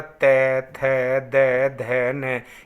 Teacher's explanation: देखिए, जैसे हमने बोला त, थ, द, ध, न, ये सभी जो हम बोले हैं जीभ दांत के पीछे लगेगी, टच करेगी, इसलिए इनको दंत कहेंगे